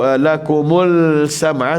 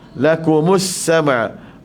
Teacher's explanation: pastikan sambungan dia lam syamsiyah, tak bunyi hidup alif lam sini ya, sebab dia lam syamsiyah. Kita tak baca lakumul sama', tak boleh.